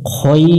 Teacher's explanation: ওয়ানুসনি আইন জবর আ, লাম ইয়া জবর লাই, আলাই, কাফ লাম জবর কাল, আলাইকাল, খ ইয়া জবর খই, র জবর র, এখানে দম ফেললে জবরটা সাকিন হয়ে যাবে। জবর যদি সাকিন হয় তাহলে এখানে দুই আলিফ টানতে হবে।